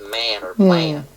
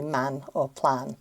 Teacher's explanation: Ah is a low sound, then it turns into kind of like an eh · Pronounce it the same way. However, when we have an A sound before an M or N consonant, there's a raising of the sound because it actually starts higher in the mouth. A is a low sound, then it turns into kind of like an air. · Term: raising of the A sound